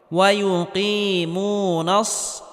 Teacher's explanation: মিম ওয়াও পেশ মু, ওয়ায়ু কি মু, নুন সদ জবর নস, সদটি মোটা করে উচ্চারণ করতে হবে।